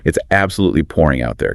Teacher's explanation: Try to really emphasize the word pouring to show your frustration.